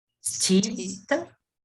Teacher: É só aspirado. É o dental aspirado.